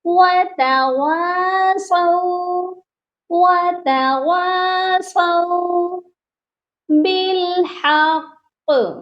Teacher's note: واؤ کے ساتھ الف ہے اور یہ والا الف مدہ ہے، اس کو ہم نے ایک الف کے برابر لمبا کر کے پڑھنا ہے